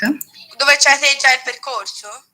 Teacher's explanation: Now, despite the fact that such a question feature a WH element in sentence initial position, the prosodic contour clearly suggests that the question expects either a yes or a no as an answer